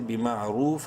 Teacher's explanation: منہ بھر کے پڑھیں گے را کو اور ایک الف کے برابر لمبا کریں گے واو مدہ کی وجہ سے